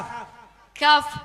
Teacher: huruf kaf. Kaf, pangkal lidah, akan tetapi naik sedikit dari makhrajnya huruf kof